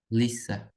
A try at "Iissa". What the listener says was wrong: it's a double E. Iissa. Iissa. There's no L there. It's just 2 E's. Iissa. Iissa.